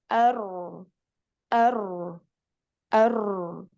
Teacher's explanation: dia ada aliran suaranya dari tengah tapi sedikit sekali celahnya ar ar sedangkan yang lain tertutup ar ar inilah yang menyebabkan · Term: tawasut